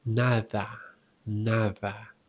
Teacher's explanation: the soft D, as in nada, you just pronounce it as if you are saying the TH sound